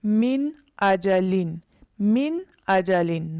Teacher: جب نون ساکن اور تنوین کے بعد حروف حلقی میں سے کوئی حرف آ جائے تو اظہار ہوگا، یعنی نون ساکن اور تنوین میں غنہ نہیں کریں گے، آواز کو نہیں چھپائیں گے۔ حروف حلقی 6 ہیں: حمزہ، ہا، عین، حا، غین، خا۔